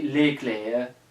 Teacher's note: But French still has the rule that you have to put an S at most of the words. But in most cases in French you don't pronounce the S like at all